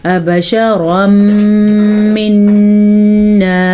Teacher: نون تنوین ہے، نون تنوین کے بعد یمون میں سے میم آیا ہوا ہے تو یہاں پہ ادغام بالغنہ کا قاعدہ ہوگا. نون کے اوپر شد ہے تو شد کو بھی ہم غنے کے ساتھ ادا کریں گے